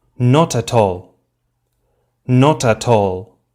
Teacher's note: look what happens with the t sounds they jump forward to the next word · the final consonant sound jumps forward and is pronounced together with the initial vowel sound of the next word, as if they formed one syllable. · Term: linking